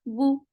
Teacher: For dhamma, circle your lips. The sound is very short.